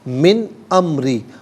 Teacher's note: را کے نیچے زیر ہے، را کو باریک کر کے پڑھیں گے